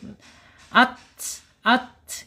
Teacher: La tamassana ya, tamas ya, ingat tak makhrajnya ada di alisan, ujung lidah menyentuh pangkal gigi seri atas. Kemudian secara sifatnya di alhams, mengalir ya ketika dia sukun.